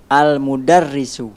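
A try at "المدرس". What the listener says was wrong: Al-mudarrisu. Bagus.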